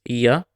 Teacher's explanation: You can see the nya is when the tongue touches the roof of your mouth. In Spanish, the double L is pronounced as ia, where you can feel a part of the tongue touch the roof of your mouth.